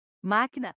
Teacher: sílaba tônica é a penúltima portanto é uma palavra paroxítona máquina a sílaba mais intensa é a antepenúltima · a sílaba mais intensa é antepenúltima, então é uma palavra proparoxítona